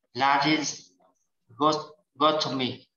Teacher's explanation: the stress is on the O, like before the otomy